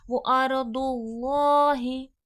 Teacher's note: अल्लाह लफ्ज़ मोटा करके तफकीम करके पढ़ा जाएगा